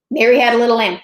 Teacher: it's actually iambic because it ends on that stressed syllable it's unstressed stressed